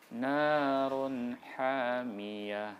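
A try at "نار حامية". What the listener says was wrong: Bukan H, semua pergi di A itu. Ha. Ha. Narun hamiyah.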